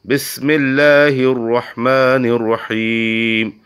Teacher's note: را ادا کرتے وقت تکرار ہونی چاہیے، لیکن زیادہ تکرار نہ ہونے پائے، اس کی طرف توجہ کی ضرورت ہے۔